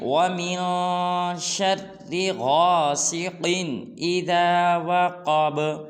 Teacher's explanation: قاف اور کاف میں فرق رکھنا ہے اور آخر میں با کو قلقلہ کرنا ہے